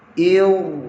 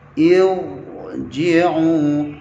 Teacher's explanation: huruf ra dibaca tebal dalam satu kalimah disebabkan sebelum ra mati ada hamzah wasal yang dibaca dengan baris bawah, iaitu kasratun 'aridah ketika nak memulakan bacaan ibtida' ya.